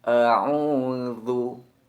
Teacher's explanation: Huruf hamzah dan ain kita ucapkan sesuai dengan makhrajnya, yakni huruf hamzah kita ucapkan dengan memberikan tekanan pada tenggorokan bagian bawah, sedangkan huruf ain kita berikan tekanan pada tenggorokan bagian tengah, sehingga tampak jelas perbedaan antara keduanya.